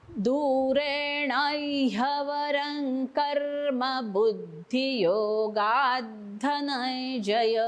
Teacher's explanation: बुद्धियोगात गा नंतर जीभ वरती लावायचे ह्याला दाताला.